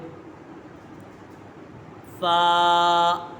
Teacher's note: فا یہ حرف شفویہ ہے، اس کا مخرج ہے اوپر کے دانتوں کے کنارے اور نچلے ہونٹ کے نچلے حصے سے ادا ہوتا ہے۔